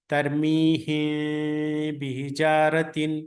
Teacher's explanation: دونوں ہونٹوں کو نہیں ملائیں گے تو یہ آواز جو ہے نا ادا کر سکتے آپ، اخفاء کر سکتے، اخفاء شفوی